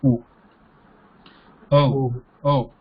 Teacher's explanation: So in the O, we have the lips rounded there and the tongue in the relaxed position, no change. So we are just changing the lips here from A position to A is normal lips and changing to rounded lips.